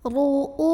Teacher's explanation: bacanya ini ditebalkan dengan cara mengangkat pangkal lidah kita. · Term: tafkhim